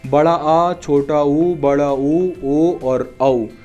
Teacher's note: पश्च भाग मतलब जिन स्वरों के उच्चारण में जीभ का पीछे वाला भाग यूज होता है